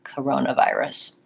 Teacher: the first syllable is short and reduced so I'm I am using the schwa sound the sound and